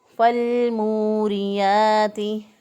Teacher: लाम साकिन हरफ पीछे वाले ज़बर ज़ेर पेश वाले हरफ के साथ मिलना चाहता है, लिहाजा लाम साकिन को हमने फ़ा के साथ मिला दिया, तो अलिफ पढ़ने में फिर नहीं आएगा